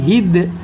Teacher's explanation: دال حروف قلقلہ میں سے اور جزم بھی پایا گیا تو قلقلہ ہوگا، آواز ٹکر کھا کر الگ ہوگی